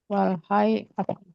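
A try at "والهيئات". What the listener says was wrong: Wal hayati apa wal hayiat? Wal hayiat Hayiatnya. Ini kasih juga tasdid ya, wal hayiat. Hayiat.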